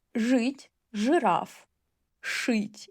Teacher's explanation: if you read и after ж, ш, ч, and щ, it will sound as ы. Жить, жираф.